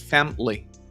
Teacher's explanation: En una conversación normal, en una oración normal, lo vas a decir como 2 sílabas.